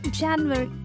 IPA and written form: ˈdʒænjuəˌri (January)